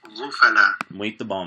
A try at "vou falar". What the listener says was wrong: Vou falar. Vou falar.